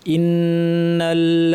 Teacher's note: ইন্না শব্দে প্রথমে হামজা ই শক্ত হবে নুনের উপর তাশদিদ লম্বা গুন্না